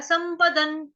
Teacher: डॉट, यानी कि अनुस्वार, जो बिंदी है, जो उसका उच्चारण है वो आधा न, हलंत न होगा। क्यों? क्योंकि आगे है त थ द ध न।